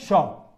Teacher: शलजम वाला शौ तालु से बोला जाता है